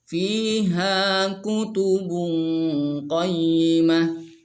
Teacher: Di mad asli ada dua, fi dan ha, jadi dua harkat.